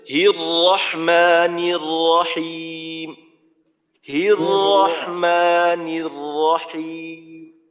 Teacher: ঠোঁটটাকে গোল করা যাবে না, রটাকে আরেকটু মোটা করে উচ্চারণ করতে হবে